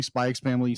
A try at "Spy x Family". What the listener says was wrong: Spy Family. The X is silent. It is there for stylistic reasons alone.